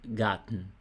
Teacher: R antes de consoante tem som de A